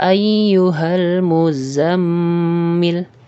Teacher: di sini ayyuhal kita langsung membaca ke huruf lamnya, sedangkan alifnya kita tidak membacanya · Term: hamzah wasal